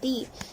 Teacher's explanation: زبان کے نوک کو سامنے کے دو دانتوں کے جڑ میں لگانے سے تا ادا ہوتا ہے۔ تا پر زیر ہے، نہیں کھینچیں گے۔